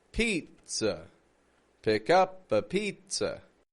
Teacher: We want to go real quick and quiet there because that is the schwa, my friend. That is the schwa.